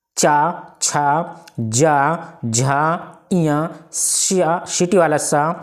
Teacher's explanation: ये सभी वर्ण किससे बोले जाएंगे तालू से यानी तालव्य से बोले जाएंगे